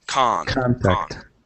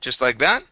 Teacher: So stress at the very beginning, and it's an ah sound at the beginning.